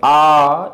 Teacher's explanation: बड़ा आ का जो उच्चारण स्थान है ये ओष्ठ से ना होके कंठ से है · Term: कंठ वर्ण